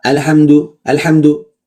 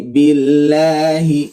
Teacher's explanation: mengalir sedikit itu namanya bainiah sifat yang pertengahan ya antara syiddah dan rakhawah antara kuat kuat dan lemah antara mengalir dan tertahan